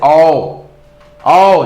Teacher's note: जिसमें कंठ और ओठ दोनों फंक्शन करे उसको कंठोष्ठ बोलते हैं।